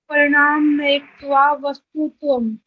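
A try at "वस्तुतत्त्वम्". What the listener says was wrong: वस्तु, उसके बाद फिर तय है। आपने वस्तु वाला तय तो बोल दिया, तत्वम वाला तय नहीं बोला आपने। फर्स्ट वस्तु तत्वम।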